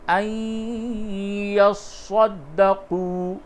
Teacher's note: نون ساکن کے بعد یا ہے، اس جگہ پہ ادغام مع الغنہ ہوگا، أَن يَصَّدَّقُوا، قاف و پیش قو، تھوڑا سا کھینچ کر کے پڑھیے۔